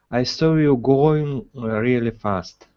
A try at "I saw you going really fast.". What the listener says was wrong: Give me a good R here on really as well.